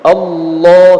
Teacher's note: pada setiap lafaz Allah terdapat huruf mad yang harus dibaca panjang 2 harokat